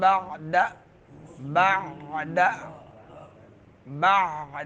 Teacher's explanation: عین درمیان حلق سے ہے